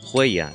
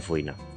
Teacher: es muy común que se aspire la F delante de los diptongos hue, ui